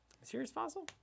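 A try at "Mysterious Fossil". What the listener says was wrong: A serious? A mysterious? I think you said a serious fossil.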